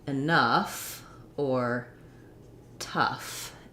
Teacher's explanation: ough saying the uff sound which is a schwa and then the gh is saying the f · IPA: /ʌf/